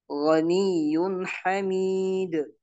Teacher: setiap nun sukun atau tanwin bertemu dengan huruf ha, maka nunnya atau tanwinnya itu dibaca jelas, tidak boleh dibaca gunah